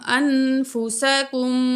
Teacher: تو یہاں جو نون ساکن کے بعد فا ہے حروف اخفا میں سے، یہاں بھی ہم نے نون کو ناک میں، نون کی آواز کو ناک میں چھپا کے پڑھنا ہے، یہاں یعنی کہ ہم یہاں پہ نون میں اخفا کر کے پڑھیں گے، ٹھیک ہے۔